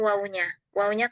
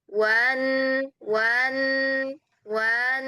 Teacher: ketika wau diucapkan disambung dengan huruf nun hati-hati di situ jangan sampai jadi panjang